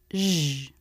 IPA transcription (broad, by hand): ʒ